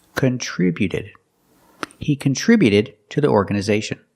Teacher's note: the t before the ed is between vowels, so it's a fast d.